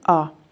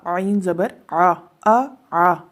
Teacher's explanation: حمزہ زبر آ، اس کو آئین کی آواز نہیں نکالنی بلکہ آ